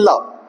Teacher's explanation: ल हमारी जीभ के दोनों पार्श्व साइड वाले सिरों से इसकी आवाज आ रही है, मतलब हवा है वो बगल से निकलती है जीभ से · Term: पाश्विक